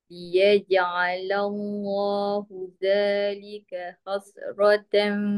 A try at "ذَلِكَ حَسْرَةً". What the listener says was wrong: ذلك حسرة حس nipis.